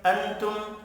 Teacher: نون ساکن کے بعد تا ہے، اخفاء حقیقی ہوگا۔